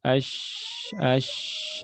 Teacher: Contoh di sini huruf shin ash mengalir suara dan nafasnya ya ash mengalir terus sampai habis nafas kita